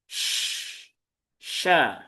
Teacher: Jadi hembusan udaranya itu berbeda. Kalau kalau saofir itu lebih ringan ya. Kalau tafasi itu dia kuat sya. Nah, jadi dia lebih kuat. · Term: tafasyi